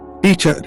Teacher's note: teacher. Stress on the first syllable.